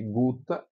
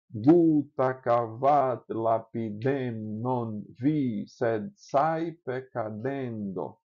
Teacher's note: aqui está o TT, a sílaba fica longa, breve, breve.